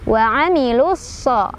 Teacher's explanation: Cara bacanya alif lamnya dilewat, tidak dibaca, atau kita langsung idghamkan ke huruf sad. Wa amilus. Mad tabi'i karena ada fathah berdiri di atas huruf sad. · Mad tabi'i karena ada fathah berdiri di atas huruf sad. Cara bacanya panjang dua harokat. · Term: alif lam syamsiyah